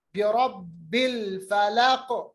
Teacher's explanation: क़ाफ को साकिन बनाएंगे तो इस पे कलकला होगा, कलकला कबीरा